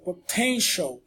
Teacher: O primeiro T é o T aspirado, o segundo é aquele som do ch, é como o nosso X ou CH do português. Então ele não tem um som de T, embora seja o T, é o som do ch, potential.